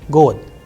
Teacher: Here the word is ending with de, god, but if you are pronouncing and pay attention minutely, then you would hear the sound of te, not de. So, it is changing into te. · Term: devoicing